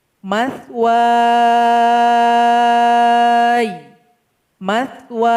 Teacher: panjangkan dulu huruf waw ini 2 sampai 6 harokat. Kemudian sukunkan huruf ya ini. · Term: mad arid lis sukun